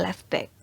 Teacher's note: in each case, the last phoneme of the first word is light or lost